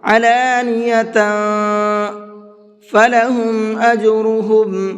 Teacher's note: وعلانیۃ، یہاں پر اخفا کریں گے کیونکہ یہاں پر تنوین کے بعد میں فا ہے، تو تھوڑی دیر آواز کو ناک میں چھپائیں گے، علانیۃ فلہم اجرہم، اور جیم کے اندر قلقلہ کریں گے، یہ جو لاسٹ میں آواز نکل رہی ہے یہ قلقلے کی کہلاتی ہے · یہاں پر اخفا کریں گے کیونکہ یہاں پر تنوین کے بعد میں فا ہے، تو تھوڑی دیر آواز کو ناک میں چھپائیں گے، علانیۃ فلہم اجرہم، اور جیم کے اندر قلقلہ کریں گے، یہ جو لاسٹ میں آواز نکل رہی ہے یہ قلقلے کی کہلاتی ہے، اسی طرح سے پڑھنے کی پریکٹس کیجئے گا۔